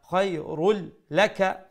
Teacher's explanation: খায়রুল, রা has a tanween, after the tanween is the letter lam, we would do the idgham but without the gunna.